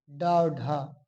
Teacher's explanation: मूर्धा से उच्चारित होने वाला शब्द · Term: मूर्धन्य